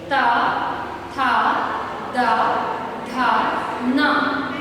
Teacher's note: हमारी जीवा दंत को स्पर्श करती है, जिनको दंत वर्ण कहते हैं।